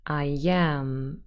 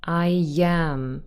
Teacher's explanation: I want you to focus on those two words and how they sound, and that is I and am, but when I say those fast and together, I am, you will hear a sound appearing in the middle, and that is y. I and am together, I am. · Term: intrusive y